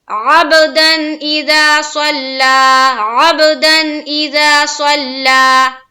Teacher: با کیا ہے؟ حروف قلقلہ میں سے ہے، تو ہماری آواز رکنی نہیں چاہیے